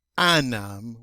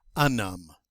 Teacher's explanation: any time that ah is followed by a vowel it loses its nasality